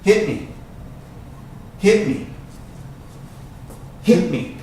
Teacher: I'm not pronouncing that T. That T, when you say it fast, hit me, doesn't sound.